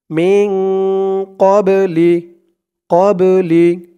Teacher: এই বাটা হচ্ছে কলকলার হরফ ধাক্কা দিয়ে পড়তে হবে